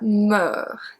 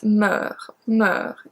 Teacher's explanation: So it's not like me, it's meur, meur, the lower sound.